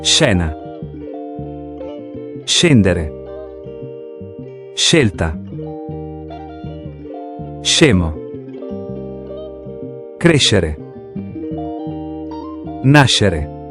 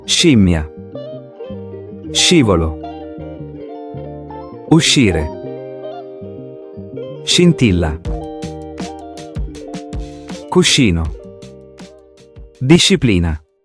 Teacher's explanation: ang basa natin ay SH sound na gaya sa English word na shoe or ship or shell.